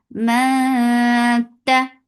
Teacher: Ma for fatha upon jaws and this is ikhfa. So keep the sound in your nose and prepare your tongue to say letter ta